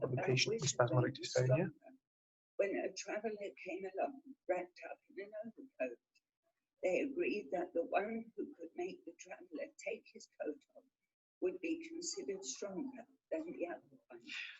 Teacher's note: there are breaks in the audible sound as the vocal folds snap shut and for the musicians amongst you this would be a staccato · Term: staccato kind of voice